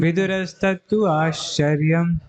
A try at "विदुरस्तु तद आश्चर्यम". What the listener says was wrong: विदुरस्तु तद आश्चर्यम, आप तद पहले बोल रहे हैं। विदुरस्तु तद आश्चर्यम,